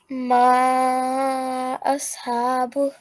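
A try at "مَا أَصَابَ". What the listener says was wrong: Very good, because this is just your 2 seconds, so this needs to be longer than that.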